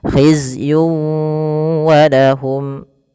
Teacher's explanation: Masuk kan di sini ada tanwin berfal yun ketemu dengan wau. Maka cara membacanya masukkan tanwin kepada huruf wau. Tidak lagi hizyun walahum tapi langsung wau.